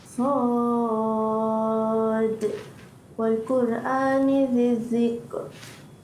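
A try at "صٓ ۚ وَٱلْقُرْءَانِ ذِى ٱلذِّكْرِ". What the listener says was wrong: sad tu tak cukup panjang. baca dari baru 4. Dia nak 6.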